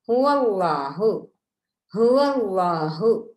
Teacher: அல்லாஹு என்பதற்கு முன்னால் உள்ள எழுத்து ஃபத்ஹா அல்லது லம்மா பெற்று வருமாக இருந்தால் அதனை அல்லாஹ் என்பதை வல்லினமாக வாய் நிறைய உச்சரித்து ஓத வேண்டும்